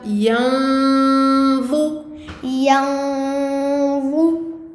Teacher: Quand on fait le noun, on s'apprête à faire le va, mais la langue sous les dents du haut. On se rapproche de ce point de sortie-là. Et on prolonge également cette lettre nasillée.